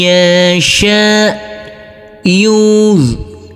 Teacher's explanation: Huruf nun yang bersukun ini bertemu dengan huruf ya yang bertasdid, maka huruf alif langsung masuk ke huruf ya. Huruf nunnya kita leburkan, huruf ya kita tekan, kita tahan, serta kita dengungkan.